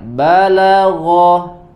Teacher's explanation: La-nya tipis, tidak terpengaruh oleh huruf ghain, ya. Tipis, la tipis juga, baru huruf ghainnya tebal.